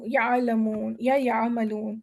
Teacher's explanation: عین کی آواز نرم، سافٹ اور بغیر جھٹکے کی ہوتی ہے